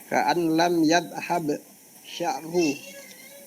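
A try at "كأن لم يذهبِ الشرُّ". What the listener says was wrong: Nah, untuk yadhhab ketika dibaca sambung menjadi yadhhabi ya. Ka'allam yadhhabi syarru.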